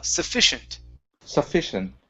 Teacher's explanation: the stress is in the middle